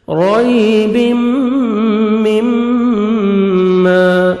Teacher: سے، رَيْبٍ، تنوین کے بعد حروف اخفا میں سے میم ہے، ادغام کریں گے غنہ کے ساتھ، نوز میں ساؤنڈ لے کے جائیں گے ، رَيْبٍ مما، میم مشدد غنہ کریں گے، نوز میں ساؤنڈ